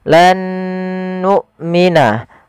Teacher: Huruf hamzah wajib dia dibaca dengan jahar dan syiddah.